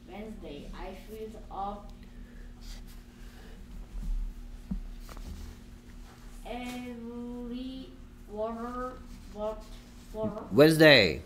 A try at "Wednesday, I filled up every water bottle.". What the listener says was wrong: Wednesday. Wednesday. I filled up every water bottle.